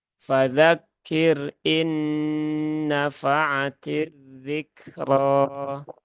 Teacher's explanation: Nah, ini roknya dibaca tebal dan dibaca panjang 2 harokat.